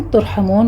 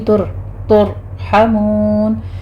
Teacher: हमून में हा वस्ते हलक से अदा करेंगे, आखिर पर मद आरिज़ वक्फ़ी हो जाएगी, इसको हमने 6 काउंट कर लेना है।